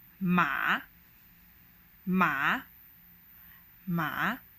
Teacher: it starts all the way from the bottom and then you suppress it and then you bounce it back to sort of the medium high pitch. The third tone will sound something like ma, ma, ma, where you lower and press your voice down and then bounce it back up, ma.